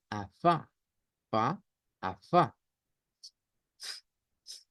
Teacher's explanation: la consonante sin voz sin vibración solo soplamos hacia afuera